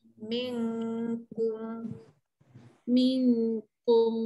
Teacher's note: pangkal lidah naik ke atas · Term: ifa hakiki